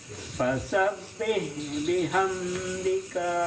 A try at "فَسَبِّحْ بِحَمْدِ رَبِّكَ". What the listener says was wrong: Yang kan bihamnya masih ditahan tuh. Jangan ditahan. Fasabbih bihamdi rabb segitu aja. Fasabbih bihamdi rabbika wastaghfir.